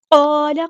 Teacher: قاف heavy letter ہے، جو ساتھ میں الف مدہ آ گیا ہے اس کو بھی ہم نے ہیوی ادا کرنا ہے، پورا ادا کرنا ہے، ٹھیک ہے۔